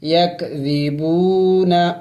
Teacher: واو مدہ کو ایک الف کے مقدار لمبا کرنا ہوتا ہے۔ یک ذیبون، وقف کریں گے تو وقف میں ہم نے اس نون کو سائلنٹ کرنا ہوگا، یعنی ساکن کرنا ہوگا، یک ذیبون، لیکن آخر میں نون کی آواز نکلنی چاہیے، یک ذیبون، ملا کے پڑھتے ہیں۔